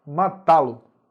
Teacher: A primeira palavra é o verbo, terminou em A, eu tenho que acentuar, porque é oxítona terminada em A. A sílaba mais forte é o tá, matá-lo